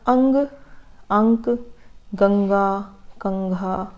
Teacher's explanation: हमारे नाक से हवा निकलती है, नाक से आवाज़ आती है, उसका अनुस्वार का उच्चारण नासिका से होता है।